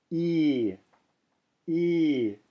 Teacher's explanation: with a line over the top and it's pronounced ye e I'm holding it for two counts when I'm saying e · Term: long vowel